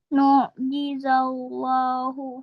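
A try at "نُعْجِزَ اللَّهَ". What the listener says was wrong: Ha? Ha. Bukan hu. Ha.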